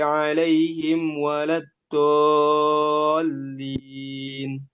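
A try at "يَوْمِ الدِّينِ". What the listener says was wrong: Didal ketika dal kasrahnya itu masih keluar udara.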